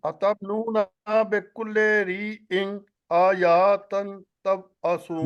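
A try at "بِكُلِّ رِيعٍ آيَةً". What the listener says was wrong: کلی پڑھے نا، مجہول نہ کریں، کلے نہیں پڑھے، کلی بکلی.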